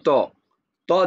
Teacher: জিহিবার আগা সামনের উপরে দুই দাঁতের গোড়াতে লাগে